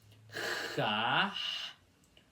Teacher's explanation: começando pelo som do X, que é forçado com a garganta